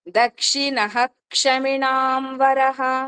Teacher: ఒక్క క్ష ముందు వచ్చిన విసర్గనే హ అని పూర్తిగా పలుకుతాము